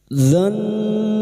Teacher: nun yang bertasdid guna musyadadah kita dengungkan selama tiga harakat